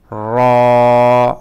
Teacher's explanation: বাংলা রর মতো কিন্তু একটু মোটা, র। আমরা র বললে এক জায়গা থেকে উচ্চারণ হয়, কিন্তু র আরেক জায়গা থেকে, র জিহ্বার আগা তার উপর বরাবর উপরের দিকে, আমরা যে দাঁতের গোড়া আছে গোড়া থেকে আরেকটু উপরে, র র।